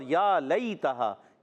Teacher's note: یا ساکن سے پہلے زبر یالین ہے، نرمی سے ادا کریں گے